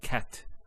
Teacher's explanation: So the T doesn't have any vowel associated with it. It's actually just a stop on the T. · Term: sukoon